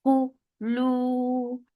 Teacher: for Dhamma circle lips, make it 2 counts long